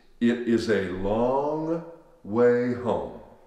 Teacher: that o all of a sudden becomes an ah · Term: a pure ah vowel